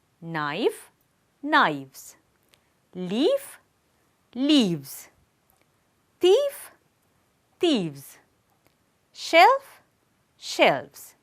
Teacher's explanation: The last sound is f and it is voiceless. So, we have to omit that sound and we have to add the sound v. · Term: voicing plus plural